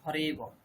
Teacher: সংক্ষেপে বলার জন্য যে পূর্বরূপ করে হরে এব, অকারটির সেখানে শ্রবণই হবে না।